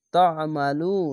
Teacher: পেশের পর ও সাকিন এক আলিফ টেনে পড়বেন